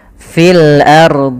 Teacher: tebal karena Kenapa dibaca tebal karena R sebelumnya adalah huruf fathah ro sukun sebelumnya fathah maka dibaca tebal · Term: ro tebal